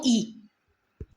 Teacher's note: देखो तालव्य में याद रख लो दोनों ई, इसमें जीभ के तालु के पास जाती है ना तब उच्चारित होता है ये तालव्य, ई बोल के देखो, ई जीभ कहाँ जा रही है, तालु के पास जाकर के उच्चारित हो रही है ना